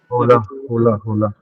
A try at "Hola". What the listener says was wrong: होला, right. So it is, हम उसको होला नहीं बोलते. We always say it as ola. Ola. H is always and always silent.